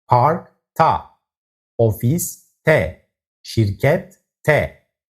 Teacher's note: K as in park and T as in şirket are strictly hard consonants, shifting the suffix to ta or te.